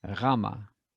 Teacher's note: you want a voiced german ch · This one is actually a voiced CH. If you think of ch, as in Bach, then put your voice in it, you've got r, Rama, a voiced German CH, Rama.